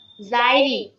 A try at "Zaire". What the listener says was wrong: Zaire, not Zairi. Zaire. Zaire.